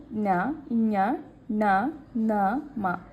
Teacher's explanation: ಮೂಗಿನ ಸಹಾಯದಿಂದ ಉಚ್ಚರಿಸಲ್ಪಡುವಂತಹ ಅಕ್ಷರಗಳೇ ಅನುನಾಸಿಕ ಅಕ್ಷರಗಳು